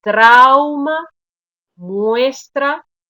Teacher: la vocal abierta de alguna manera se impone sobre la vocal débil sobre la vocal menos fuerte y eso hace que se agrupen eso sería un diptongo